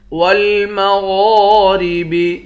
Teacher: غین کو بھی موٹا پڑھیں گے اور 1 الف کی مقدار کھینچ کر بھی پڑھیں گے۔